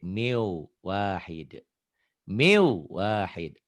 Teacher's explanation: Nah, ini bunyi nun matinya hilang. Masuk ke W. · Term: idgham bigunah